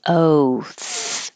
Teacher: just the o sound will be oath he took an oath the th is hard to hear because it's voiceless so it could sound like singular oat because you won't hear the T oat he took an oat